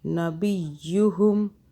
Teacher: یا کو طاقت سے پڑھیں گے تاکہ دو آوازیں بنیں